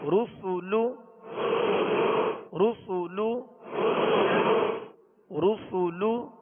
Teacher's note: سین کو سیٹی کی آواز میں باریک پڑھیں گے · دونوں ہونٹوں کو کامل گول کر کے ادا کریں گے. اگر کامل گول نہیں ہوں گے تو پھر رو سو لو یہ بن جائے گا، اور یہ ہے معروف مجہول طریقہ. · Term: پیش کی ادائیگی